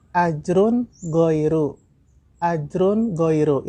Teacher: Itu ada tanwin doma bertemu dengan huruf ogin. Nah, ini hukum bacanya adalah ijhar, dibaca jelas.